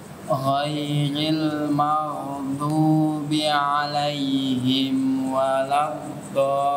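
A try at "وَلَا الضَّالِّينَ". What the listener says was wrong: Kurang panjang tuh. Tahu hitungin ya. Nggak boleh pendek-pendek. Sepanjang.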